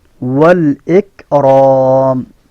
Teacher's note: काफ के अंदर कलकला की आवाज़ नहीं आनी चाहिए। एक राम ये दुरुस्त नहीं है।